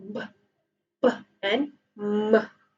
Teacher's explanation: You are producing sound, but you restrict, you obstruct the airflow using your two lips, your upper lip and your lower lip.